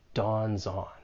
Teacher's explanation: You can link the final consonant sound in dawn with the vowel sound in on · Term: linking